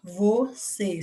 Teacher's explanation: a palavra você do texto dois é uma palavra oxítona você sílaba tônica é a última portanto é uma palavra oxítona